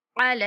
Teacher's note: لام کے اوپر کھڑا زبر، لام کو کھینچیں گے